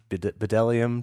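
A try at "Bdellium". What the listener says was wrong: pronounced Delium. The B is silent.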